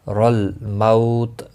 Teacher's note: مو واولین ہے، تھوڑا نرمی کے ساتھ کھینچ کر ادا کریں گے۔ تا ساکن پڑھیں گے وقف کی صورت میں۔